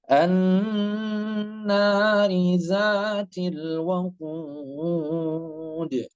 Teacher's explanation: Kemudian nunnya, nun yang bertasydid disebut dengan gunnah. Gunnah itu 3 harokat ya. Jadi jangan sampai lebih, jangan sampai kurang.